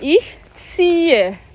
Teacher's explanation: Eu quero muita atenção para a pronúncia, porque a primeira sílaba é Z-I-E, vai ter som de T-S e um I longo, T-S-I. Ah, e o H também faz parte da sílaba e ele é mudo.